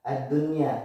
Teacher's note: Kebetulan di sini ada wawu dan di sini adalah satu kalimat atau satu kata. Dia dibaca jelas nunnya ya, wajib idhar. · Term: idhar wajib